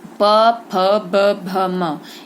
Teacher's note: इन पांचों को बोला तो आपके मुख का कौन सा भाग चिपकता है बच्चों? हमारी होठ है ना, तो इसको ओष्ठ्य वर्ण कहते हैं